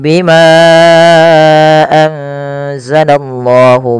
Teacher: dibaca dengan bacaan ikhfa nunnya disamarkan ke huruf zai